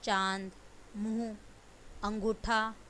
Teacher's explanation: जिस ध्वनि का उच्चारण करते समय हवा नाक और मुंह दोनों से निकले उसे बोलते हैं अनुनासिक